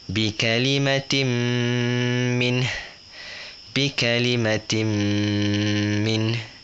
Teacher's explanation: 2 harakat dekat mim tu. Dia masuk ke mim. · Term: idgham